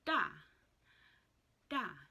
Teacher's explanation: remember the last consonant is silent it is just a tonal marker